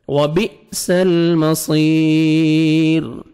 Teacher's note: یا مدہ ہے, لاسٹ میں را سٹاپ کریں گے, ساکن ہو جائے گا. اور را کو آپ نے باریک کرنا ہے کیونکہ را ساکن سے پہلے یا ہے